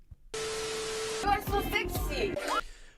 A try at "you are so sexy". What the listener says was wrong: Okay, she says, you are so sexy. To me, it sounds a little too much like an I. Sexy, sexy. The only difference there, the mouth is a little wider to make the short E sound. That's a small one.